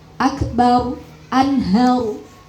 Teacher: ro sukun yang dibaca tafkhim ini juga ada yang kecolongan ee kurang tebal.